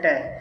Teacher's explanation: तो ट का उच्चारण स्थान होता है मूर्धा से